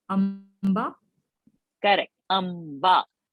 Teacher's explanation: Because ba is in pa varga. Pa, pa, ba, bha, ma. So ma is the anunasik for the pa varga. When I'm putting a dot ba, you are reading amba.